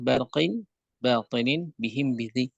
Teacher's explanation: Dan dari sinilah kemudian kita diperlihatkan untuk mengucapkan dengan tipis. Walaupun ba itu mempunyai sifat syiddah dan mempunyai sifat jahar, tapi secara pengucapan dia adalah huruf yang tipis.